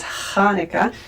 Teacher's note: it's not an H and it's not a CH, it's kind of in the middle and much further back at the top of your mouth